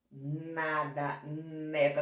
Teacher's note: Pois é, veja que o N você pronunciou, você pegou a língua e você colocou lá atrás, na parte de cima dos dentes